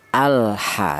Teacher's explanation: lam mati ini atau lam sukun ini dibaca jelas atau dibaca idhar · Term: idhar qamariah